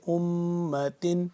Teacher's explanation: کنتم خیر امت خا یا زبر خی خا کو موٹا کر کے را کو موٹا کر کے خیر امت میم مشدد ہے اس پہ غنہ کریں گے